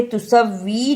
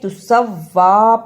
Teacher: واؤ پر کھڑی زبر ہے، اس کو بھی تھوڑی دیر لگانی ہے۔ اسے تسوی نہیں پڑھنا، یہ تسوا پڑھا جائے گا۔